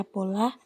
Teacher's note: Pada kata pola, misalnya fonem P diucapkan secara lepas.